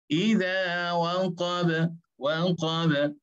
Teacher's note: qalqalah yang berlaku pada huruf ba kerana ba bersifat dengan istifal dan izlaq dan dia keluar daripada 2 bibir mulut